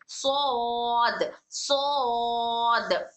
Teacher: हमारी टंग का back side ऊपर पैलेट को जाकर टच होगा और सौद मोटा पढ़ा जाएगा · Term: सिफत इस्तिला